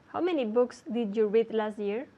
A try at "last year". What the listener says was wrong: The T at the end of last?